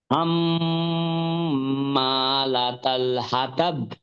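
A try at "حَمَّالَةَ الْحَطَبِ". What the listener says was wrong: হ্যাঁ, এবার ঠিক আছে, কিন্তু ওই যে হাটা সুন্দর হয় নাই, এটাকে আরেকটু সুন্দর করতে হবে।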